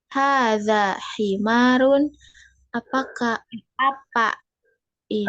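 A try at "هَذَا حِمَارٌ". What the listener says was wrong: bacanya itu jangan pakai nada kalimat tanya. Yang pertama ini. Hadza himarun.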